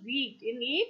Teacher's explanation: closed it is the height of the tongue and the lip position is unrounded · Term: long vowel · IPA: i: